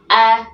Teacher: huruf hamzah keluar dari pangkal tenggorokan, huruf hamzah huruf tipis.